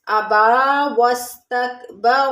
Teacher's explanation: ابا میں با کے اوپر کھڑا زبر ہے، تھوڑا سا کھینچ کے پڑھیں گے